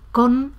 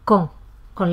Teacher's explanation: lo que ocurre es que la vocal precedente se nasaliza y en lugar de decir con se dice con la O nasalizada.